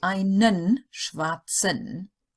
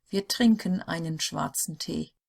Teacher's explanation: if the E is in the final EN of a word, it doesn't get pronounced, or hardly really.